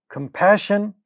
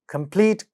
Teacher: ka at the initial position, but not aspirated because these are not stressed syllables